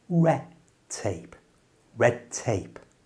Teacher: In everyday English, the letter D when it's followed by a T in the next word, like it is here, red tape, well, it disappears.